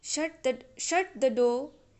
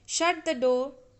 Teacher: while giving commands, you should use falling tone